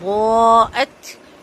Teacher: ضاد کو بہت اچھا سا پر کر کے 4 حرکت لمبا کریں گے، مد واجب ہے، تا کا ہم واضح کریں گے۔